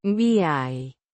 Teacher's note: with the stress on the second syllable, the J. sounding like the H in house, but with a slight friction